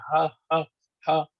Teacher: یہ گلے کے بالکل نیچے والے حصے کی طرف سے نکلتا ہے